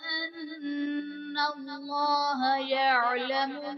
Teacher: ان اللہ میں نون مشدد ہے تو یہاں پر غنہ کریں گے، اور اس میں جلالت اللہ عز و جل کے لام سے پہلے حرف پر زبر ہے تو یہاں پر اس میں جلالت اللہ عز و جل کے لام کو پر یعنی موٹا پڑھیں گے.